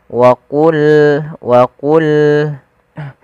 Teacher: Pada lafal wa qulna ya, qa salah satu huruf yang dia kita namakan dengan salah satu sifatnya adalah sifat huruf isti'ala, yang mana pangkal lidah kita harus kita angkat sehingga terdengar suara qa-nya menebal